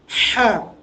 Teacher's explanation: হা উচ্চারণের জায়গাটা হচ্ছে আপনার হলকের মধ্যখান।